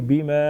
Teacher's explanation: الف مدہ، الف مدہ ایک الف کے برابر کھینچیں گے